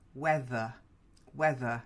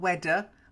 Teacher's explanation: the tongue goes slightly under the front teeth